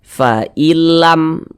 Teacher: idgham bila ghunah maka ini hukumnya adalah idgham bila ghunah maka cara membacanya dengan cara memasukkan kemudian tidak disertai dengan ghunah tidak didengungkan